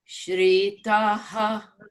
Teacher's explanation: But shritaha, it goes low again because of the dash underneath the I.